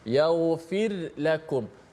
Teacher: Maka kita jelaskan ra mati secara nipis itu.